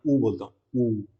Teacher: अब देखो मैं ऊ बोलता हूँ, ऊ, देखो मुंह गोल हो गया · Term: वृत्ताकार